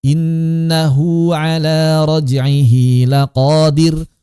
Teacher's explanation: hu dan hi ini kalau tidak dipanjangkan akan samar suaranya. Maka cara menghilangkan khofaknya adalah dengan dibaca mad. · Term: mad silah